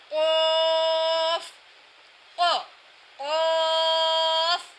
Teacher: جب زبان کی جڑ کا آخر جو کوے کے پاس ہے جب اوپر کے تالو سے لگے گا تو قاف ادا ہوگا اور موٹی آواز میں مستعلیہ کیا جائے گا